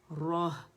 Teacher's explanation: را موٹی ہوگی لیکن ہا موٹی نہیں ہوگی, اسے ہے کو باریک پڑھنے, اقص الحلق سے ادا ہو رہی ہے.